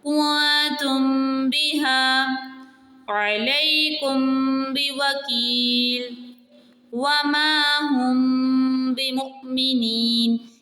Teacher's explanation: با کی جو آواز ہے وہ تھوڑی سی چھپ رہی ہے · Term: اخفاء شفوی